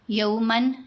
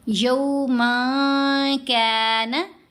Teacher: मन में जो नून है उसको नाक में छुपा लेना है इफा का कायदा है साथ गुना भी करना है यमा कान शरहु मुस्तकी ये त ये त दोनों का महरज एक है।